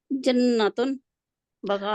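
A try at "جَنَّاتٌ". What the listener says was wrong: अभी भी आप जन्नत उन कहेंगे तो एक बाग होगा, खड़ी जबर नहीं आपको नजर आ रही है, ये है जमा, क्योंकि जन्नत उन कहेंगे तो एक बाग है।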